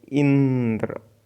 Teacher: तो पहला देखते हैं संयुक्त व्यंजन के उच्चारण में इससे पहले वाले जो वर्ण है उस पर बालाघात होता है। जैसे इंद्र में ई पर बालाघात हो रहा है